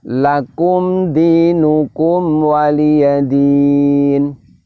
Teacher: Walaupun dalam keadaan idhar safawi di situ, namun bunyi mimnya tetap dialirkan.